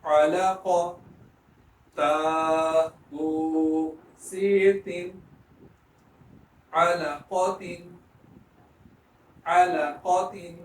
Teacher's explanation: قاف کو موٹا پڑھیں، لام کو درمیان میں باریک پڑھیں